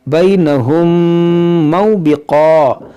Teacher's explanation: इदगाम शफ़ी होगा, यानी गुन्ना करेंगे